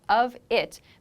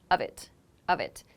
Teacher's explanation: with of it the two kind of connect they make a v sound